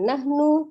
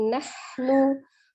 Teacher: Ada hak sukun, tampakkan sifat al-hams, alirkan udaranya ya, tidak dipatahkan nahnu tapi nahnu.